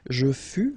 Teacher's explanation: keep in mind that final S is not pronounced